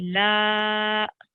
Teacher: It's called a madda, and we need to extend it or make it long for about 4 seconds. So 3 to 4 seconds.